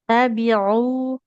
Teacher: Huruf ain itu enggak boleh naik ke hidung.